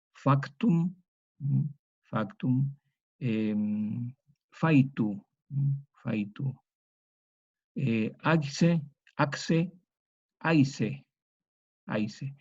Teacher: Entonces, vemos que eso es una posibilidad. La otra, que esta consonante K se vocalice en una yod